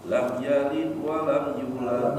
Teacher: dalnya sukunnya itu dipantul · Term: Qalqalah